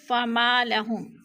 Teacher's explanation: فما لهم، فما پہ الف مدہ ہے، الف خالی سے پہلے میم کے اوپر زبر ہے، فما لهم الف مدہ۔ الف مدہ کو ایک الف دو حرکات کے برابر ہم نے کھینچ کر پڑھنا ہے۔